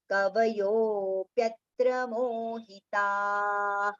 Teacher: See the visarga has come at the end of the line. So ta we have to prolong and then ha with the short pronunciation.